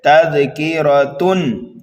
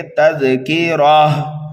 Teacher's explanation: کلمے کے آخری حرف پر اگر گول تا آ جائے تو وقف کرنے کی وجہ سے اس گول تا کو ہائے ساکنہ سے بدل دیا جاتا ہے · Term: وقف بالابدال